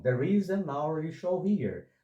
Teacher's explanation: Porque a palavra hourly, sendo derivada da palavra hour, o som inicial aqui é vocálico, porque o H inicial é mudo. Então, there is an hourly show here.